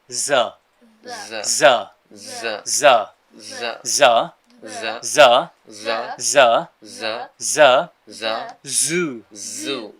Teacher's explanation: জিবার সামনের অংশটা উপরের দাঁতের গোড়ায় নিয়ে যেতে হবে